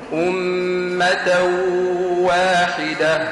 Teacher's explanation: الإدغام مع الغنة في التنوين